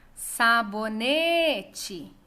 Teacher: Ne é a sílaba tônica e ela é a penúltima da palavra. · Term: paroxítona